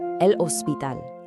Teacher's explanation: The hospital, el hospital. In Spanish, that H is totally silent, so just drop it.